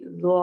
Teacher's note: وموعظۃ للمتقین، ومو واو لین، عظا عین حروف حلقی میں سے، ضا موٹے حروف میں سے، نرمی سے پڑھا جائے گا، زوا زوا کی ساؤنڈ نہیں ہوگی، زوا ہوگا، زوا نرمی کے ساتھ اور موٹا بھی ہوگا. زا نہیں پڑھیں گے ورنہ وہ زال والا زا بن جائے گا، اس کو ہم نے موٹا کرنا ہے، ہیوی کر کے پڑھنا ہے.